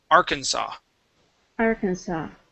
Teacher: it's actually pronounced uh arkansas okay so the s at the end is not pronounced